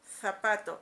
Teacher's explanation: Es una interdental, la lengua se coloca entre los dientes, por eso se llama interdental, está entre los dientes.